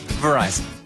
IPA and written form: vəˈraɪzən (Verizon)